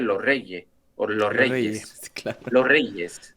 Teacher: sea cuando tiene una palabra que termina en s y la la próxima empieza por una r en español no se dice la s